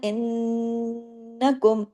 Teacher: नून पे तशदीद है, बड़ा गुन्ना हुआ